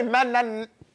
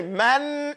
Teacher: you say man and you hold it. So you have gunna in it, but you don't wait.